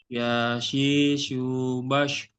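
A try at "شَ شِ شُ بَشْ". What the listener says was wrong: Lebih deras lagi, Pak. Udaranya keluar. Yang shin.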